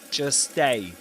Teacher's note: what he does by not producing not pronouncing the T sound in the middle of these words in between these two words is to produce only one S sound